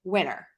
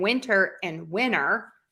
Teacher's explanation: oftentimes we just drop the T all together and we don't mark it at all